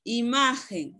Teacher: La sílaba ma es la que va a llevar la mayor fuerza de voz. Es la que va a llevar el acento.